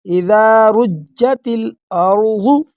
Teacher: را کو تھوڑا سا موٹا پڑھیں گے اور تا کو ڈائریکٹ لام کے ساتھ ملائیں گے